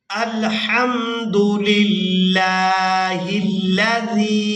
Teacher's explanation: لفظ اللہ کے لام کو باریک ادا کیا جائے گا کیونکہ اس سے پہلے والے حرف کے نیچے زیر ہے